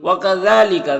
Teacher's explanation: ذال میں کھڑا زبر ہے، ایک الف کے برابر کھینچیں گے